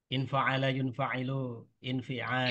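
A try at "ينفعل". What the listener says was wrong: Yanfa'ilu, ya. Tadi jenengan yunfa'ilu. Jadi fi'il mudhari yang huruf ya-nya dibaca dhamma itu hanya yang fi'il madinya 4 huruf.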